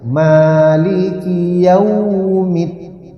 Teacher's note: Jadi yau tidak dipanjangkan tapi diayun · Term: lin